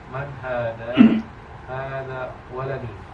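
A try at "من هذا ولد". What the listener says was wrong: Man hadza ya, bukan hada. Man hadza waladun.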